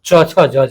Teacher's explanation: च वर्ग का उच्चारण स्थान तालु होता है